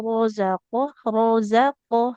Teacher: Ro-nya karena fathah dia tebal.